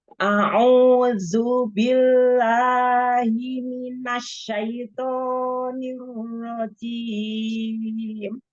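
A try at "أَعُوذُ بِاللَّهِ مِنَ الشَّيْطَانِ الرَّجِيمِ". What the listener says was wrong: A'udzu billahi. La, dua harokat. Minasya. Toknya juga dua harokat.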